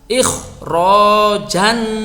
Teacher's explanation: Ingat ketika kita mengucapkan huruf kha ini adalah huruf isti'la, maka kita harus perhatikan lidah kita harus naik. Dan ini dibaca tebal.